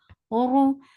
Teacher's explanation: Ra is heavy and give little takrar. The sound is short.